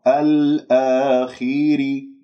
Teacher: الآخر ري راء مرققة لماذا لأنها مكسورة